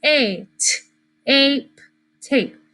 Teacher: It's not going to be short A. It becomes a long A. It says its name.